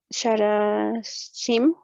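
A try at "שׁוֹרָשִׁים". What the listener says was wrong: Shorashim. Sí, solamente esta se lee como O, la otra sí se va a leer como A. Shorashim.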